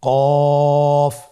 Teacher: আবার বলুন কফ কফের মাখরাজ স্ক্রিনে লক্ষ্য করুন এখানে আমরা মাখরাজের বা উচ্চারণের স্থান দেখতে পাচ্ছি কফের মাখরাজ হলো জিহ্বার গোড়া তার বরাবর উপরে তালুর সঙ্গে লাগিয়ে উচ্চারিত হয়